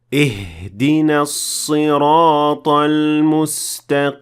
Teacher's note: I exaggerated the pronunciation of the ha, which will essentially empty your lungs of air. And while this doesn't change the sound of the ha or change the meaning of the word, it is not considered to be the proper way to pronounce it, since it might affect the recitation of the rest of the ayah.